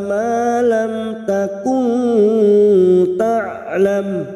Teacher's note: Wa 'allamaka malam, ma fathah diikuti alif 2 harokat. Malam mim sukun bertemu ta idhar safawi, mim sukun dibaca jelas tanpa mendengung.